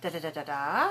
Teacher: Introductory phrase intonation, da, da, da, da, da. A little bit rise at the end of that phrase in order to let the listener say, oh, this person's not finished speaking.